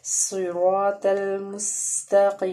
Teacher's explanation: یا کے پیچھے زیر ہے تو یا مدہ کا قاعدہ ادا ہوا ہم نے اس کو کھینچ کے پڑھا